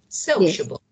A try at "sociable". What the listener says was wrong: No. Sociable, of course. The stress is, you know, sociable, the first one, sociable.